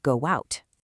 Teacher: When we say go out, our mouths naturally insert an invisible W sound to bridge the gap smoothly, resulting in go out. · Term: linking a vowel